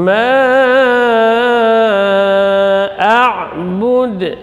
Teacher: Ma a'bud, a syiddah dan jahar keluar di pangkal tenggorokan, kemudian ain tawassut keluar di tengah tenggorokan, jadi tetap mengalir sebagian dari suara. Ya, bukan semuanya, dan tidak boleh juga tertahan, bukan a tapi gitu.